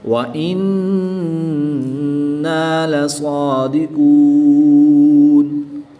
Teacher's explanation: نون مشدد میں غنہ آنی کر کے پڑھیں گے